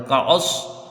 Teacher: کعصفم، ٹھیک ہے، کاف کو جلدی پڑھا جائے گا، عین کو صاد سے ملا کے بھی جلدی پڑھیں گے، حروف مستلیہ میں سے ہے تو اس کو پر پڑھا جائے گا